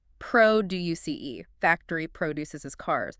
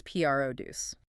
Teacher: If you are using it as a verb meaning to make or create something, the stress shifts to the second syllable.